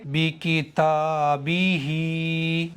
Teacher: تا کو کھینچیں گے، با کو نہیں کھینچیں گے. ہا کو ایک الف کے برابر کھینچیں گے. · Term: کھڑی زیر